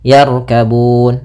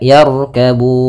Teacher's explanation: Mad Alif di sukun kita boleh memanjangkannya dua harakat empat harakat ataupun enam harakat